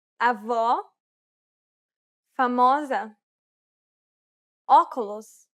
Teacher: This is identical to the O in the word hot. This sound is known as the open O sound in Portuguese.